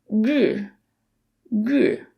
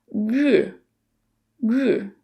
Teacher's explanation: The R sound is a retroflex sound, requiring you to curl the tip of your tongue backwards, and then the vowel sound is a little unusual as well.